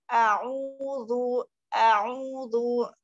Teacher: u-nya jangan terlalu a'udzu, jangan terlalu panjang. Dua harokat saja.